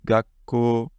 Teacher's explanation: j'engage quand même ma bouche en position de prononcer le k. C'est juste que je ne fais pas passer d'air.